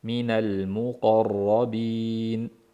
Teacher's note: Muqarrabin qof a bo'lib ingichka emas, o qilib yo'g'on qilamiz.